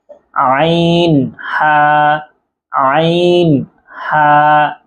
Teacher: এই দুইটা হরফ হলকের মধ্যখান হইতে উচ্চারণ হবে, অর্থাৎ কণ্ঠনালীর যে মাঝখান আছে সেখান থেকে উচ্চারণ হবে